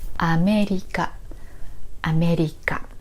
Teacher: America starts low, then moves high, and then continues to be high until the end. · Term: no accents